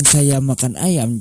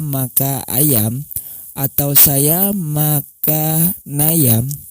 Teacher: jika seandainya kata makan huruf n-nya di sini tidak diperjelas atau menghilangkan huruf N pada kata makan atau malah menggabungkannya dengan kata ayam